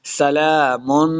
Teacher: سلام قولا من رب الرحیم، سلام، سین پہ سیٹی کی آواز آئے گی، لام کے اوپر کھڑی زبر ہے، اس کو 2 حرکات لمبا کرنا ہے